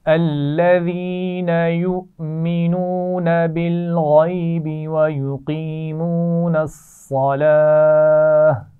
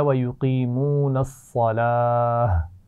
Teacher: صلات اصل میں صلاتا ہے نا، آخر میں گولتا آ رہی ہے، لیکن میں نے اس پہ وقف کیا تو میں نے کیا کیا، میں نے اس کو ہا ساکن سے بدل دیا